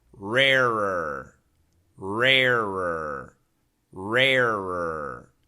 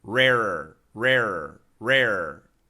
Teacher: the tongue never moves for the r pronunciation it's the same position for all three Rs